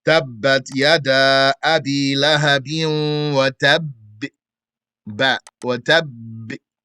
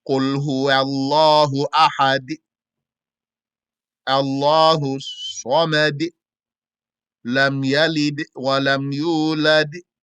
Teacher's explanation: The reliable saying is that it inclines towards a kasra in the ba, jim, and dal, not a fatha. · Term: qalqalah